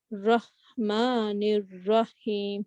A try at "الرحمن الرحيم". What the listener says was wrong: ہاں کی آواز آنی چاہیے. اور ہاں کی آواز کیسے ہوتی ہے؟ زبان پیچھے جاتی ہے جسٹ لائک عین. ہاں جیسے اینک صاف کریں.